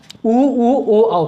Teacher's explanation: जिन स्वरों के उच्चारण में हमारे ओठ गोलाकार होते हैं उन्हें हम वृत्तमुखी स्वर कहते हैं।